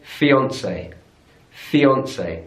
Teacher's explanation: So stress on the middle syllable there.